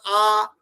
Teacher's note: মুখটা পুরো খুলে গেল সেই জন্য ওর নাম হলে গেল কেন্দ্রীয় স্বর বা বিবৃত স্বর, আ। যেই হাটা ছোট হয়ে গেল অমনি নাম হয়ে গেল অর্ধ বিবৃত।